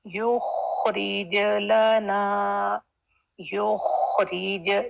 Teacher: جیم کی sound clear bounce back آنا چاہیے